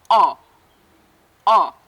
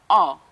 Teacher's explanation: The sound for the short letter O. The sound is produced with the back of the tongue raised a little higher towards the soft palate, and the mouth is wide open and the lips take an oval shape. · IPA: /ɒ/